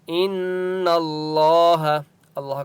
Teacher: نون کے اوپر تشدید ہے، اس لیے یہاں پر غنہ ہوگا